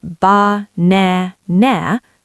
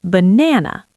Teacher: The first and last A become schwas. They are weak.